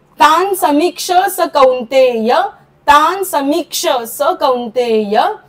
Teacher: स श असेल तर विसर्गाचा उच्चार आपण करत नाही तो दबून जातो